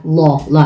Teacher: kasi ang unahan niya na vowels is fatha, so ito bibigkasin mo na makapal